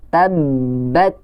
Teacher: Nah, fungsi tasydid itu adalah untuk mendabelkan huruf. Jadi hurufnya kayak ada 2 dan pas dibaca otomatis harus ditahan terlebih dahulu. Jadi harus tabbat.